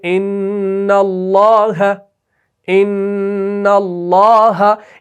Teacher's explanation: ایک الف دو حرکت کے برابر آپ نے اس نون مشدد اور میم مشدد کو کھینچنا ہے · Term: غنہ زمانی